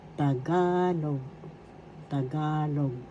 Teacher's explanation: First syllable ta, second syllable ga, third syllable log. The accent is in the second syllable ga.